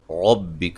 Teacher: را کو موٹا، کاف کو باریک پڑھیں گے